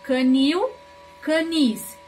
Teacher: Quando eu tenho a última sílaba tônica, que é o ni.